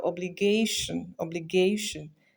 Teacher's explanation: stressed on second to last syllable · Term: penultimate